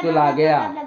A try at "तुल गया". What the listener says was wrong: तुल गया। गलत, तुला गया बोला आपने, तुल गया था, रॉन्ग।